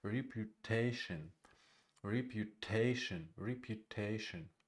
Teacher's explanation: Repu is unstressed. The first two syllables is unstressed, and the third syllable is stressed.